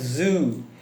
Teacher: The voice is alveolar reactive. It's produced by placing the tongue too close to the alveolar ridge and allowing air to pass through while the vocal cord vibrates.